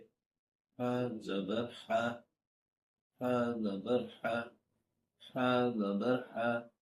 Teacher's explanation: تیز بھاگنے کے بعد جس طرح ہوا ہمارے منہ سے نکلتی ہے، اسی طرح ہا کی آواز آتی ہے